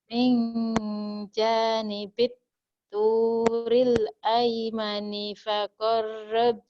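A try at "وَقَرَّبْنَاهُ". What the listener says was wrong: Wa bukan fa. Wa qarrabna bukan fa tapi wa.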